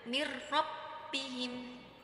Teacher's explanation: Ada nun sukun bertemu dengan huruf ro, jadi cara membacanya itu harus dengan idgham dimasukkan tapi tanpa dengung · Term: idgham bila gunnah